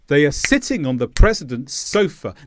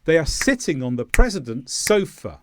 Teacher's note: Now notice here, on the gets squashed because I have two grammar words in between my stressed sounds